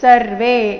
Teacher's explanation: ಎಲ್ಲಾ ಅಕ್ಷರಗಳು ರಸ್ವ ಸರ್ವೇ ನಲ್ಲಿ ಕೊನೆಯ ವೇ ಮಾತ್ರ ದೀರ್ಘ